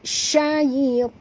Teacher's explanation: ya di sini sifatnya lin, lembut